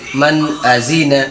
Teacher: نون ساکن کے بعد حرف حلقی میں سے حمزہ آ رہا ہے، اس لیے نون کی آواز کو ظاہر کر کے بلا غنہ کے جلد پڑھیں گے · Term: اظہار